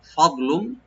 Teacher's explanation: ফাটাকে open রাখবেন, দটাকে একটু আমরা ডিপ করে পড়বো, কিন্তু তবে কলকলা হবে না